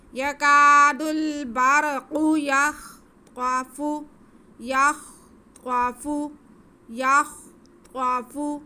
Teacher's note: قا کو ہم موٹا کر کے پڑھیں گے کیونکہ یہ حروف مستعلیہ ہے